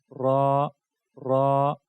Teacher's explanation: اس تکریر صفت کی وجہ سے اس میں تکرار پایا جاتا ہے، تو آپ نے تھوڑی سی تکرار اس میں پیدا کرنی ہے، لیکن زیادہ تکرار نہیں پیدا کرنا، جس طرح را نہیں، تھوڑی سی تکرار پیدا کرنی چاہیے کیونکہ یہ اس کی صفت ہے۔